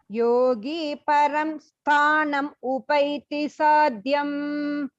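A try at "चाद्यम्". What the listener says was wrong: Chadyam. Stress illa. First cha.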